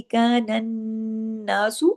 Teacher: नून पे तशदीद है, नून पे गुन्ना होगा। नून पे गुन्ना होगा, अकमल आवाज देर तक नाक में छुपेगी।